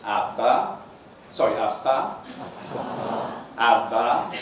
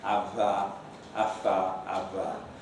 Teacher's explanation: The target of the English articulation, not always realized, I must admit, is a true lip-teeth bite. So, ava, ava, and not bilabial, ava, afa, ava.